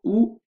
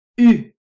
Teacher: Et pour prononcer en français, la langue doit aller à l'avant. Donc, ou, la langue derrière, U, la langue devant.